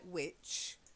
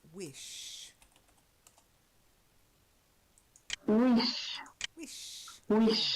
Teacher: You've got to get the softer sh sound rather than the ch. So not like which, yeah, which or which.